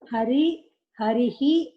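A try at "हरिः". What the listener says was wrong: Missing the Visarga. No, missing the Visarga.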